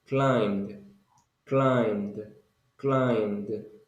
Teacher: In this case, you don't pronounce the letter B. You only pronounce climb with M and then D.